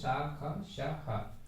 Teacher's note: जब हम इनका उच्चारण करते हैं तो जो ध्वनि निकलती है वो काफी घर्षण करते हुए निकलती है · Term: ऊष्म व्यंजन